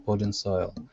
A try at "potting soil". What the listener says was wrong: Okay, so instead of putting, it's potting soil. Potting soil.